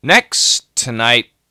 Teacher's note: Next t, make sure we get that t sound. Next tonight, t's go together here.